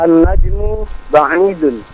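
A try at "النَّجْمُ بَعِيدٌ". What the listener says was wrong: Mumtaz.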